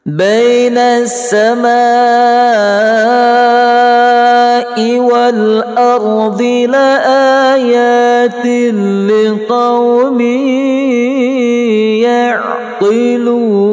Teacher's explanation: Tanwin di bawah lam bertemu dengan lam, hukumnya idgham bila gunnah, tidak berdengung.